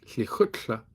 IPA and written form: liˈxʊtɬə (lekgotla)